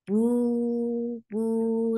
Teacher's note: Circle your lips and make it 2 counts long.